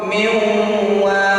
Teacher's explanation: Miwal agak ditahan dua harokat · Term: idgham bi gunnah